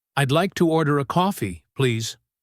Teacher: The emphasis is slightly on coffee.